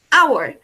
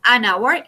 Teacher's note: Esta H de hora en inglés no es, no suena como una J, como en la palabra que teníamos ahorita, como en house, sino que esa H no suena. Es decir, que debo utilizar el artículo an. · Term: H muda